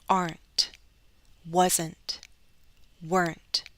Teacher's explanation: if I'm speaking carefully you're going to hear me produce the final T at the end